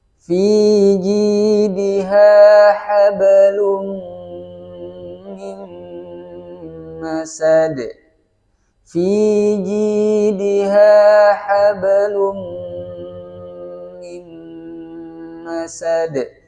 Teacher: harokatnya dhammah tain bertemu dengan mim, maka menjadi idgham bi gunnah disertai dengan dengungan